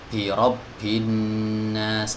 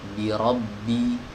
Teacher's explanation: Ba tidak punya hams ya, ba sifatnya jahar. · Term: huruf ba